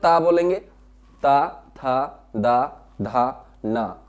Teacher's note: हमारी जबान जो है दांतों से टकराएगी। आप दांतों के बीच में ऐसे उंगली लगाइए और फिर ता बोल के देखिए तो आपकी आवाज नहीं निकलेगी।